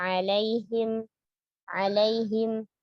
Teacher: Huruf ain itu maaf, jangan masukkan suaranya ke hidung, ya, karena tidak ada gunnah pada huruf ain